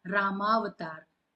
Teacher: उस स्वर से हम अगले स्वर पर जब आते हैं और जब दोनों का मेल होता है तब एक नया शब्द बनता है। जैसे कि हमने राम अवतार अ दोनों को मिलाया अ और अ तो हमेशा दीर्घ स्वर बनेगा।